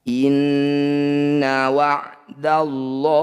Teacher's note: lafaz Allah jika didahului harokat fathah disebut lafaz Allah tafkhim atau tebal. La kita bunyikan lo.